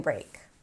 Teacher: Spring break, because the NG of spring connects to the BR of break. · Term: connected speech